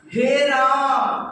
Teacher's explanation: फ्लूट स्वर उसको कहते हैं जैसे किसी को बुलाने में, हे राम, क्या बोलते हैं, हे, एकदम लंबा जा रहा है